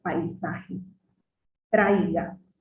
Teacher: Empieza con una vocal abierta y va acompañado de una vocal cerrada. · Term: diptongos decrecientes